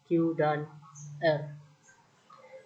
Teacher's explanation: bunyi yang dihasilkan oleh keterlibatan pangkal lidah atau dorsum dan anak tekak